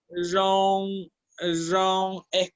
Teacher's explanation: La R, la lengua se mantiene hacia arriba tocando el paladar duro y simplemente deja salir el sonido. Es como que está a punto de decir la R, es como entre una Y y una R.